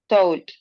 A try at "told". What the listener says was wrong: told. Okay, so it's almost like in Spanish, but you gotta remember que no vamos a decir told, porque no es una O en español, it's told. All right, right, told with D.